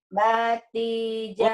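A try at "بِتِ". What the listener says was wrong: Bukan. Bukan bati. Biti.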